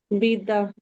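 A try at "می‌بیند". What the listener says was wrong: इस ऑन मर्दरा, यहाँ तक तो आपने सही बताया। मी बीनद, नून चाहिए वहां पे।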